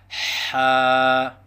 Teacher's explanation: حرف ہے حا، مخرج حا وسط حلق سے ادا ہوتا ہے، یعنی حلق کے درمیان سے حا ادا ہوتا ہے۔